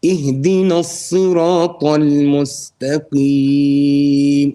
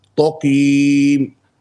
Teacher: the ta should be empty mouth, okay, and the qaf should be full mouth. So ihdina as-sirata al-mustaqim, not taqim, wrong.